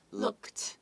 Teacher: the d kind of sounds like a t